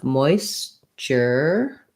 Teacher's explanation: Okay, so of course we have the root word moisture in this word. We have first syllable stress, so the moist syllable is long.